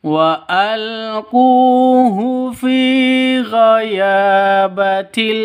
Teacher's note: dua ketukan karena ada wau mati diawali dengan dommah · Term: Mad asli